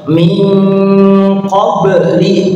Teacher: ba-nya sukun dibaca qolah ya, harus memantul